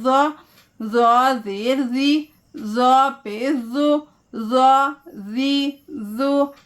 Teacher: सामने के दो दांतों के दरमियान टिप ऑफ द टंग को बाहर निकालेंगे तो ज़ा अदा होगी। ज़ुबान की नोक को थोड़ा बाहर निकालते हुए ज़ा पढ़ेंगे सामने के दांतों के बीच में तो ज़ा अदा होगी